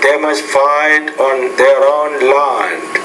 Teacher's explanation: once you get to the end you want to drop your tone just a little bit